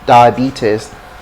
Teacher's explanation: It's in the B that is stress. So B is where you get the stress.